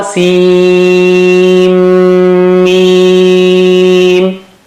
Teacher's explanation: Here's another one, and there is shadda on Mim, so you got to stretch at that merger point twice, and the sound should come from nose. That is to give ghunna to it.